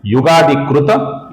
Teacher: इसका जो त है, अपूर्ण त है, इस त का द बन जाता है जब आगे य आता है।